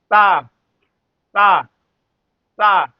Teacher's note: ता ता ता दांत पर जोर लगा के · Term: दंती सा